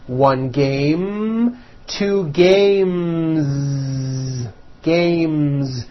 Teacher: sound M which is a voed consonant so because of that when you add an S the S should also be voiced